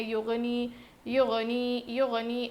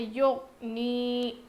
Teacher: غائن پر ہم بالکل بھی قلقلہ نہیں کریں گے